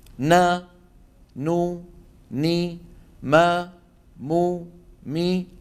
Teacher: وتكون الغنه انقص ما تكون يعني اقصر ما تكون في النون والميم المتحركين